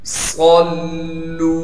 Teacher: ہا کو صاف کر کے گلے سے نکالیں گے، گلے کا وہ حصہ جو منہ کی جانب ہے، اور ہا کو آگے یائے مدہ سے ملا دیں گے، اس لیے کہ وہ ساکن ہے، اور ہا کو ایک الف کے مقدار کھینچیں گے۔ صلو، صاد کو موٹا بھی کرنا ہے، صاد میں سیٹی بھی نکالنی ہے، پھر یہاں پر ہم صاد کو لام تشدید سے ملا دیں گے، اور تشدید کی وجہ سے تھوڑا ٹھہراؤ رکھیں گے، اور لام کو آگے واو مدہ سے ملا دیں گے، اس لیے کہ وہ ساکن ہے، اور واو مدہ کی وجہ سے لام کو ایک الف کے مقدار کھینچیں گے۔